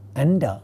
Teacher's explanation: It is a retroflex sound. Therefore, the nasal member of this cluster is going to be a retroflex nasal